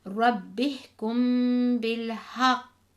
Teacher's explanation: the strong echo, and this is when we stop on a Qalqalah letter with a shadda